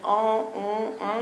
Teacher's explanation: Des voyelles qui peuvent ressembler, quand ils parlent, à des « en »,« on »,« un », comme ça. Une sensation de voix nasonnée avec de l'air qui fuit.